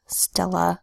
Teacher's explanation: the second syllable ending with an A that makes a schwa sound